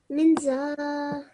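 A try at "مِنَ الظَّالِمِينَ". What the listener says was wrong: Me, and then noon has fatah. Mina zalimin.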